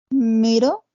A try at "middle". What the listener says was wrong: Middle, muy bien, muy bien. Nada más al final hay que marcar más el sonido de la L como middle.